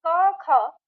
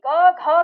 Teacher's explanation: पहला और दूसरा क, ख। तो उसमें न के बराबर कंपन है और तीसरा, चौथा, पांचवा उसमें कंपन ज्यादा हो जाता है।